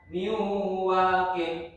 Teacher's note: ini dibaca agak lama dikit karena di situ ada nun mati bertemu waw